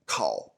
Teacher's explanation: the K, it has a stronger puff